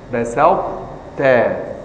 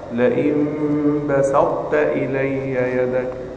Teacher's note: لأن هذا إدغام ناقص وليس كاملا، لأن الطاء أقوى الحروف، فلا تذهب بالكمال هنا، إنما هذا إدغام ناقص، أبقينا صفة الإطباق والاستعلاء التي في الطاء، فلا يدغم القوي في الضعيف إدغاما كاملا، لكن يجوز العكس، الضعيف يدخل في القوي، أما القوي لا يدخل أبدا في الضعيف دخولا تاما.